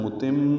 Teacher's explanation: متم، میم مشدد پہ غنہ ہے